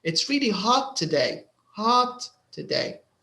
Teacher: Because hot is important to the meaning of the sentence. So there's a little more stress.